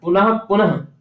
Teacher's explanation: आगे हैं ये, इस पर टिप्पणी कही गई है, देखिए, विसर्ग का भेद जो उपदमानी है, जब विसर्ग के बाद प फ वर्ण रहते हैं तब अर्ध विसर्ग उच्चारण होता है। उदाहरण, पुनः पुनः, पुनः पुनः, देखिए यहाँ प है दूसरे वाले पुनः में, तो ये अर्ध विसर्ग की तरह उच्चारण होगा, यहाँ पर ये विसर्ग नहीं कहा जाएगा।